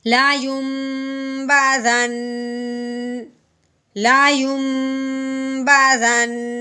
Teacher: وقف کی صورت میں آخر پر حرف کو ساکن کرتے ہیں تو ساکن ہونے کے ساتھ ہی مشدد بھی ہے تو اس کا غنہ جاری رکھیں گے، ویسے وقف کر دیں گے۔